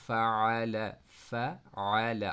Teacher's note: آپ کی آواز سٹاپ نہیں ہو رہی، بلکہ آپ کی مڈل تھروٹ سے عین کی آواز جو ہے وہ ادا ہو رہی ہے